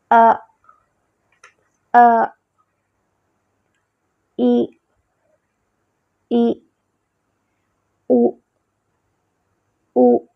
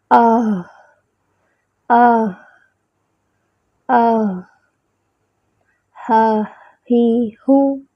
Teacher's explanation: اقصی الحلق سے حمزہ اور ہا ادا ہوتے ہیں